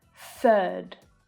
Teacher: this is the unvoiced th sound, third. And this is the same vowel sound as in first, the vowel sound. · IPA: / θ /